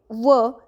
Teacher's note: दंतोष्ठ म्हणजेच दात आणि ओठ, ज्यामध्ये व हे एकटं व्यंजन येतं